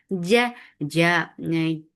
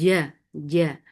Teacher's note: Don't let any breath or sound escape in jim. Otherwise, it will sound like ch.